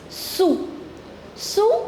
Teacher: We do not pronounce the last consonant S. So, this is sous.